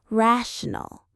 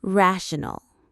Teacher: The syllables are ra shun. The main stress is right at the beginning.